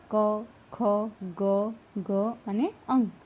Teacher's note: કંઠીય વ્યંજનો એટલે કે જીભનો પાછળનો ભાગ કંઠ પાસે જઈને હવા રોકે છે તેવા જે વ્યંજનો છે એને ને કંઠ્ય વ્યંજનો કહેવાય છે ક